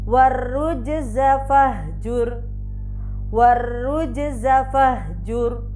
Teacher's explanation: Jadi di situ ro dibaca tafkhim. Kenapa? Karena fahjur di situ ada ro sukun yang sebelumnya berharokat dhammah.